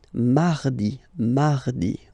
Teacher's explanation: you can hear that you don't pronounce it that strongly, this R.